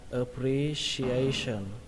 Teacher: Trọng âm thứ nhất là ở chữ re, và trọng âm thứ hai ở chữ a. Tuy nhiên cái trọng âm thứ hai này là cái trọng âm chính các bạn ạ.